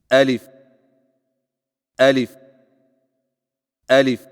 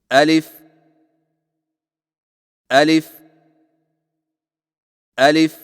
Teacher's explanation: الف کی ادائیگی میں آ کو بغیر کھینچے، لی کو فا کے ساتھ فوراً ملائیں